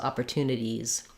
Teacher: if the word ends in IES it's just an ease sound so it's the tense e